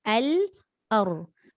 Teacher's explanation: Lam dia ada inhiraf, ra pun ada inhiraf, dia ada lencongan.